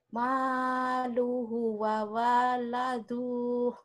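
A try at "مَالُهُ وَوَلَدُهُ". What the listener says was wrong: Mana yang panjangnya? Ini hu-nya panjang, Bu.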